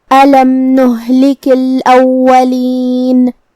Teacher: کلمت نہلک میں لام اور کاف کے نیچے زیر ہے، لہذا ہم یہ سب حرکات کو ظاہر کریں گے. کلمت الاولین میں یہاں واو پہ تشدید ہے، تو 2 حرف کے برابر ہمیں حرف الواو کو پڑھنا ہے کیونکہ تشدید کی اصلیت 2 حرف ہے.